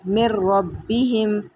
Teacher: اور اسی طرح آگے بھی دیکھ لیں، نون ساکن ہے اور نون ساکن کے فوراً بعد را مشدد ہے، مشدد حروف آ گیا ہے، تو یہاں پہ ہم نون کو نہیں پڑھیں گے، را کو ملا کر پڑھ لیں گے